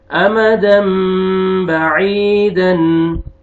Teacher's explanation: یا مد ہے، یا سکون سے پہلے کسرہ، عین کو آپ نے کھینچنا ہے